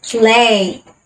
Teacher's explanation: For the L sound, use the tip of your tongue against the tooth ridge. Hold it there and let the air flow along the side of your tongue. Your tongue can drop down into the following vowel sound, oo, lay.